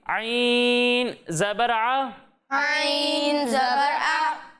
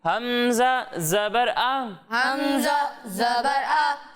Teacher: एक हर्फ है आइन और दूसरा हर्फ है हमज़ा। जब हम आइन की अदायगी करेंगे तो इसे हलक के दरमियाने हिस्से से पढ़ेंगे, और जब हम हमज़ा की अदायगी करेंगे तो इसे हलक के निचले हिस्से से पढ़ेंगे